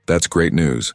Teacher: slightly exaggerated tone with emphasis on great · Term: Sarcastic